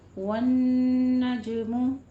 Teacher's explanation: नून तशदीद वाला है, गुन्ने वाजिबा करेंगे, जीम पे कलकला करना है, मीम के ऊपर दोनों होंठ गोल कीजिए।